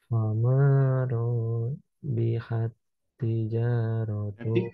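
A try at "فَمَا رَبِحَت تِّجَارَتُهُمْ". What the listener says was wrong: Ro-nya kepanjangan. Ro-nya kepanjangan. Fama robihat.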